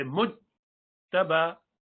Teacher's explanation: the middle part of the tongue needs to go up to the top, and it doesn't let any continuation of the sound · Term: jim